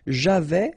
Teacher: final S not pronounced